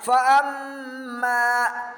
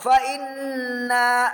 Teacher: musyaddadah Hai Muzakki dada adalah Apabila ada nun mati mim bertasydid dibaca dengan berdengung kira-kira dua harokat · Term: ghunnah